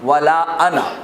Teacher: اہل عرب جب کبھی انا کو بولتے ہیں تو وہ الف کو گرا دیتے ہیں